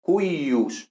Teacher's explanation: esta I consonante intervocálica computa como una consonante doble